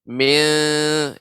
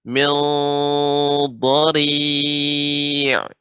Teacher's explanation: adapun mil, maka ini ya tipis, kurang tebal. Mil dengan lidah dinaikkan ke atas.